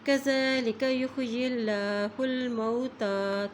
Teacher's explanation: اللہ کے نام سے پہلے زیر آ گئی ہے تو اس لیے یہاں پر اللہ کا نام باریک عطا کیا جاتا ہے